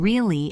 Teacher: If I say it with a falling tone really it means I believe you or I agree.